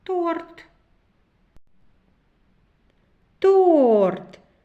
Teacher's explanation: перший звук т твердий приголосний торт о голосний торт р твердий приголосний торт Т твердий приголосний